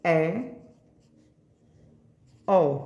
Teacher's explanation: अर्धविपरीत स्वर, इसमें मुख हमारा आधा खुला होता है